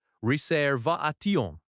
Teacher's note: In the sentence, I have a reservation, the stress is on va in reservation